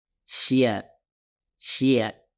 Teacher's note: sering kita dengar di Indonesia khususnya pengucapan huruf syin yang mana Banyak dari mereka yang membaca huruf syin dengan memasukkan huruf ya Di dalamnya